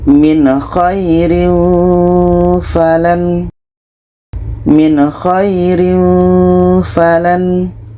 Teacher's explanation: Nun jelas, kha jelas dan tidak ada dengung. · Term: izhar halqi